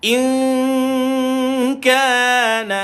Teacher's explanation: Dan antara huruf istifal adalah huruf kaf, maka masukkan kat sini. Kaf huruf istifal, sebab bila kita baca lidah kita tak naik. Dan huruf istifal ni kebanyakan huruf-huruf yang nipis tuan-tuan.